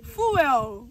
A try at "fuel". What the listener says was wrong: Fuel. Fuel. There's no D in there.